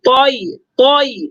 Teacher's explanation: طا چونکہ موٹا حرف ہے لہٰذا اس میں ہونٹوں کو گول نہیں کریں گے